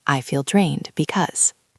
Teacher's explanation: because drained ends with a D sound and because starts with a B sound, you have to be careful not to stop too long.